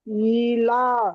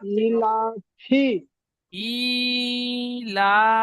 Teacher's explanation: লামের উপরে খাড়া জাবার এসেছে, খাড়া জাবার আলিফ মাদ্দার সমতুল্য, সুতরাং খাড়া জাবারকে আলিফ মাদ্দার মতো একালিফ টান দিয়ে পড়বো।